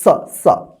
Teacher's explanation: दोनों दांत के बीच में जीभ आता है तब जाकर जो है ना इसका उच्चारण होता है